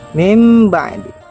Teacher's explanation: Nun sukun diubah cara bacanya menjadi mim. Mim ba'di. Catatan untuk iqlab: ketika membaca iqlab, bibir atas dan bibir bawah itu saling bertemu, tapi tidak ditekan dengan kuat.